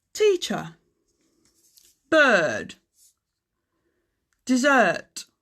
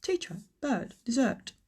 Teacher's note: English people don't really like to pronounce the letter R, so they'll avoid it if they can.